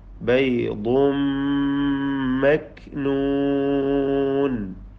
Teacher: ബൈദുൻ തൻവീനിനെ മീമിൽ ലയിപ്പിച്ച് മണിക്കുക പൂർണ്ണമായും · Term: ഇദ്ഗാം ബിഗുന്ന കാമിൽ